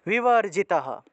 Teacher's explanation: এখানে বিসর্গটা লাইনের শেষে থাকায় পূর্ণরূপে হ